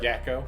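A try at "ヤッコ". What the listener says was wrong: It's not Yako for sure. I think it's like Yako. Like just pause a little bit. Yako.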